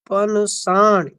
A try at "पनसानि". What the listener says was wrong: पनसानी, नहीं ना में आ है। पनसानी, ठीक है।